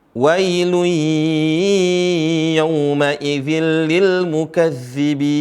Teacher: Di sini ada tanwin bertemu dengan ya, atau yang disebut dengan idgham bi gunnah, ya. Ditahan 2 harokat sampai 4 harokat. 2 atau 4, ya.